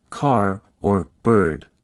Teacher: American English is rodic, meaning the R sound is pronounced clearly in all positions